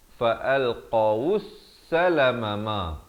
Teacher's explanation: Alif lam syamsiah, lam tidak dibunyikan.